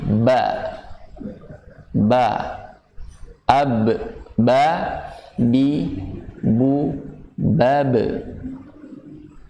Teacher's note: Sifatnya jahar, yaitu dibaca jelas. Karena apa alasannya? Tidak ada udara yang mengalir. Ba tidak dibaca ba gitu, ngeluarin udara, tapi ba, ab, ba, bi, bu, bab.